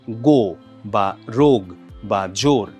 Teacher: বাংলা একাক্ষর শব্দে ওকারটা সবসময় দীর্ঘ হয়